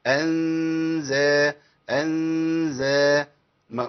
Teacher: انزلنا نون فاضيه جه بعديها زاي ماجاش بعديها لام ولا راء يبقى في غنه على طول غنه اخفاء